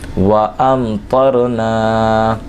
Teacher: نون الف زبر نا میں الف مدہ، اور اس کو ایک الف کے برابر کھینچ کر پڑھیں گے